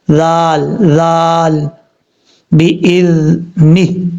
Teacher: یہ جو زال ہے اس کو سیٹی کے ساتھ نہیں پڑھنا، بغیر سیٹی کے ساتھ پڑھا جائے گا. اور اس کا مخرج ہے زبان کا سرا اوپر والے دانتوں کے اندرونی کنارے سے لگے تو زال پڑھا جاتا ہے، زال زال، بِإِذْنِهِ.